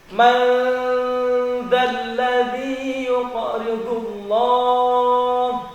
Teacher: Jadi ujung lidah keluarkan sedikit dengan dua buah gigi yang atas. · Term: huruf dzal